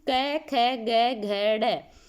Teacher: कंठ है, क्योंकि आवाज कहाँ से आ रही है? गले से आ रही है, तो ये कंठ हो गए।